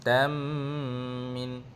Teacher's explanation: idgham ma'al ghunnah, kena dengur dua harakat berserta kena tutup mulut.